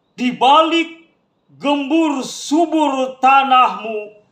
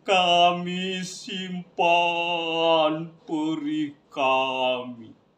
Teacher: Baris yang pertama diucapkan dengan intonasi tinggi, sedangkan baris yang kedua diucapkan dengan intonasi yang rendah.